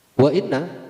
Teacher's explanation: Wa inna dibaca gunah karena mengandung hukum gunah. Nun tasdid itu dibaca gunah atau ditahan kira-kira satu alif